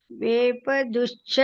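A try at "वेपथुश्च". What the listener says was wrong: ದು ಅಲ್ಲ ಮತ್ತ ಅದು ವೇಪತುಶ್ಚ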